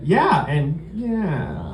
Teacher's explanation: the second yeah sort of trailed off into vocal fry like it was limping off to die in a forest somewhere